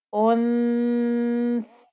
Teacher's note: while I'm making the ghunnah in my nose, the humming noise that comes from my nose, my tongue is actually between my teeth.